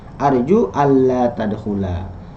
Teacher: Nah, maka tulisannya dilebur, nunnya hilang ya, maka masuk ke lam, nunnya hilang, lamnya jadi bertasydid. Allah itu terdiri dari an dan la. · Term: diidghamkan